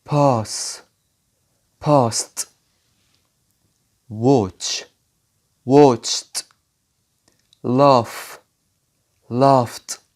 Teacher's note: بننطق حرف الدي بصوت تي لما يجي في نهاية الفعل المنتظم في الماضي البسيط، لما يجي قبله على طول أي حاجة من الحروف دي، سواء P أو PH أو S أو F أو SH أو CH أو K.